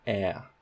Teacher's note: So we'll say, look, it's closer to low than it is mid, so we're going to call this a low front unrounded vowel